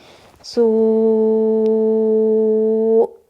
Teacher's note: اور اگر اب ہم اس کو وقف کریں گے تو ہم حمزہ ساکن کر دیں گے, اور ہم اس کو پھر 6 کاؤنٹ تک بھی اسٹریچ کر سکتے ہیں. سوء, حمزہ ساکن ہوتا ہے تو جھٹکا آتا ہے